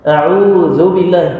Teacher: حرف ذال لابد أن نخرج طرف اللسان